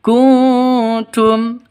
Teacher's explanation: nun mati bertemu dengan ta samar didengungkan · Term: Ikfa Hakiki